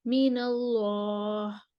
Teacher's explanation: लाम का अलिफ जो है ना वो ऊपर तक मोटा लेके जाए। मिनल्लाह, यहाँ पे होंठ खोल लेते हैं आप, वो नहीं खोलें, ऊपर तक होंठ उसी पोजीशन में रखें, जुबान उठी ही रहे।